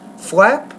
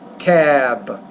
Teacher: Lesson 19, focus on, I think that the main thing here, P, is when you put a P or B at the end of a word, the B is a voice consonant, it'll make the vowel sound longer before it